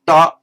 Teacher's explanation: This one, da, known as retroflex, flex bent, retroflex bent back, because the tongue is bent back and its points touches the hard palate a little way further back.